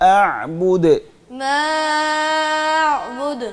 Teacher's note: झटका नहीं है मा की आवाज को सीधा लेके जा रहे हैं फिर आगे आ बोलना है